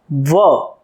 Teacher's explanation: દંતોઠ્ય વ્યંજન. ધારો કે વ બોલવો હોય તો દાંત અને હોઠ ભેગા થાય છે